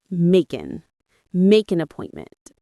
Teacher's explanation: We don't say make an with the hard stop. We blend them smoothly.